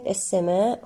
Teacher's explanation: كلمة السماء هنا لدينا مد متصل واجب يمد أربع أو خمس حركات في حالة الوصل. السماء وما هنا الألف ما الطبيعي وصلا ووقفا يمد بمقدار حركتان.